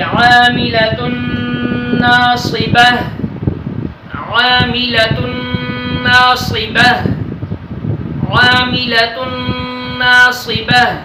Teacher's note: نون تنوین کے بعد نون آیا ہے، ادھر ہم ادغام مع الغنہ کر کے پڑھیں گے